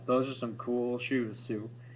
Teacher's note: we do have the same exact vowel sound, oo, 3 times in a row